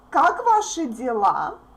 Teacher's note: Even if E makes the previous consonant soft, please don't forget that sh is always hard.